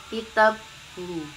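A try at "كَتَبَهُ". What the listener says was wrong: kitabhu itu tak ada alifnya. Kitabhu taknya ada alifnya. Kata bahu. Bukan kata hu. Kata nyatet bahu.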